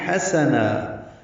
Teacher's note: ہا وسط حلق سے ادا ہوگا، سین صفیر کی آواز سے